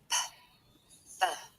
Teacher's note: the closure is formed with both my lips